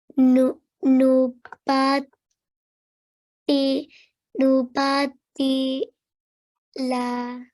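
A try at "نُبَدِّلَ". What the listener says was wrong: Mashallah, very, very nice. You read all the letters just right. Let's just work on the timing, okay? Nu. Nubad. Nubaddi. Nubaddila.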